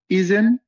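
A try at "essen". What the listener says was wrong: ইজেন না ভাইয়া, এজেন। এ অবশ্যই এ উচ্চারণ করবে। এসেন, ডাবল এস এর মতো উচ্চারণ করবো।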